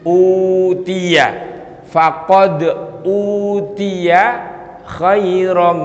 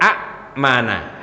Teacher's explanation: ngenalnya amanah Paman amanah sebenarnya a Mana hamzahnya hilang dipanjangkan hurufnya pemanjangan huruf dari Hamzah kepada huruf mad ini disebut dengan mad badal berapa panjangnya cuma dua harokat atau satu Alif maka itu dia